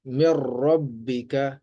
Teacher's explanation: پہلی جو ہے نون کی ہے، نون ساکن کے بعد را ہے، دیکھیں را اسی میں سے ہے، را یا لام، تو نون ساکن کے بعد را آ گیا ہے، لہٰذا یہاں پہ ادغام تو ہو رہا ہے، یعنی ایک حرف کو دوسرے حرف میں داخل تو ہم کر رہے ہیں، لیکن را کی وجہ سے غنہ نہیں ہوگا · آواز کو ہم ناک میں لے کے نہیں گئے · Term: ادغام تام